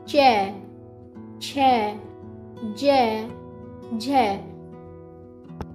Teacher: जो आपकी जीभ है ना, वो आपकी तालू से टकरा रही है। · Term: च वर्ग